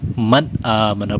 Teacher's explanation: من آمنہ میں آگے حمزہ آ رہا ہے جو حلق سے ادا ہوتا ہے، تو من آمنہ میں غنہ نہیں کریں گے، من آمنہ پڑھیں گے.